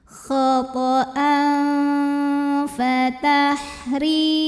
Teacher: Maka tanwinnya dibaca samar-samar. Jadi kita siap-siap mau membunyikan huruf fa ya, disertai bunyi dengung. Nah, ini karena fa ini makhrajnya tidak terlalu dekat, juga tidak terlalu jauh dari nun, maka bunyi samar dan dengungnya sama. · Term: ikhfa awsat